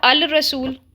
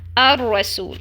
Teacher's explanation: اس میں لام کو ہم مرج کر دیتے ہیں، ادغام ہو جاتا ہے اس کا، اس لیے را کے اوپر آپ کو تشدید نظر آ رہی ہوگی. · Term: ادغام شمسی